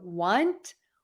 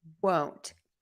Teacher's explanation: when I say want, my lips pull back, as opposed to when I'm saying won't, my lips tend to stay a little more rounded, and that has to do with the vowel.